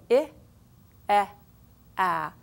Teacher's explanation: Now, the reason they're arranged like this is because if you watch the mouth as you're saying them, I, E, A, the mouth is dropping further and further open